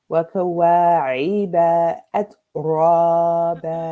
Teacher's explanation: There's a feta followed by aleph, so it's 2 counts.